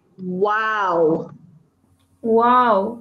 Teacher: the W sound is a voiced sound. What that means is this part of your throat will move. Can you touch this part of your throat?